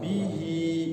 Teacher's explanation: Hi-nya panjang dua harokat namanya mad sila qasirah dua harokat ya